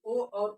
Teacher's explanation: ओ और ओ का उच्चारण स्थान कंठ ओष्ठ है